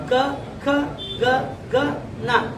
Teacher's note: ಈ ಕವರ್ಗ ಎಲ್ಲ ಅಕ್ಷರ ಹುಟ್ಟುವುದು ಎಲ್ಲಿ ಅಂದ್ರೆ ಗಂಟಲಲ್ಲಿ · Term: ಕಂಟ್ಯ